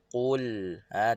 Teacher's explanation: lam keluar daripada hujung tepi lidah, sentuh pada gusi atas. Hujung lidah belah tepi ni, kiri atau kanan, sentuh pada gusi atas.